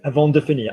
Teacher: And you flew through it and you put your stress on the finir